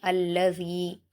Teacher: अल्लज़ी, यहाँ पर भी शुरू में हमज़ा पर कुछ नहीं नज़र आ रहा है तो हमज़ा को ज़बर देकर लाम से मिलाएंगे। अल्लज़ी, ज़ाल पर या मद्दा है, दो हरकत खींचेंगे।